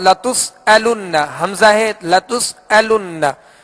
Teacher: تو اس کو علن عین کی آواز میں نہیں پڑھیں گے بلکہ حمزہ کو سختی کے ساتھ ادا کریں گے. لتسألن نون مشدد ہے، اس پر تشدید ہے، اس پہ غنہ کریں گے.